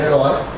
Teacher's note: Nós separamos a palavra herói. O i é uma semivogal porque, foneticamente falando, herói, i, é pronunciado com uma intensidade bem menor.